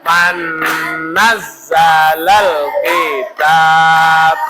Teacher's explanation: Bertemu nun dibaca masuk dengan dengung. Dua ketukan disebut idgham bigunnah.